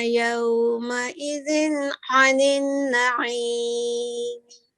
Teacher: یہ زا پہ کسرہ تنوین ہے، اس کے بعد عین متحرک حروف حلقی میں سے آیا ہے، تو یہاں جی پہ اظہار کر کے پڑھیں گے